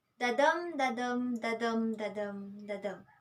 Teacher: it has a stressed and unstressed syllable it reflects a sort of sound of a heartbeat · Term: iambic pentameter